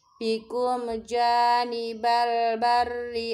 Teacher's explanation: mim sukun bertemu huruf jim disebut idhar syafawi jelas mimnya.